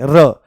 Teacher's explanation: मुंह में लुढ़कती हुई सी आगे मालूम होती है। और जब आप र बोलते हो तो ऐसे कंपन भी उठता है।